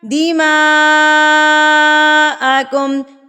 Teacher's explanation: اس مد کو ہم نے 4 حرکات کے برابر کھینچنا ہے